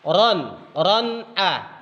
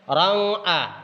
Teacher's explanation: Di sini ada tanwin bertemu dengan hamzah, maka yang tanwin itu harus kedengaran jelas. Ran a, bukan rang a, jadi tidak suara ng, tapi ran a. Nun itu harus jelas. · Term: idhar